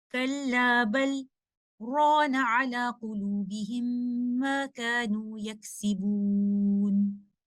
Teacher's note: And Hafsun Asim Tariqatu Shatibiyya has another obligatory sakt, which appears in Surah Al-Mutaffifin, ayah number 14, where we can see there is a tiny scene between the word bal and rana. So after reciting the lam sakina of bal, the reciter will do sakt, and then he or she will continue the recitation with the word rana